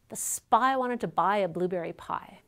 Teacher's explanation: the word pie is produced with a little puff of air as the p is released that puff of air is called aspiration english speakers systematically produce